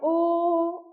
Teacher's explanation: ओ औ का उच्चारण स्थान है कंठ और ओष्ठ · कंठ से आवाज निकल रही है, ओ, और दोनों साइड मेरा ओष्ठ भी थोड़ा थोड़ा टच हो रहा है